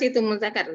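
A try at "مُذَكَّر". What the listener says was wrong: Za seperti sa, nih, za, muzakkar.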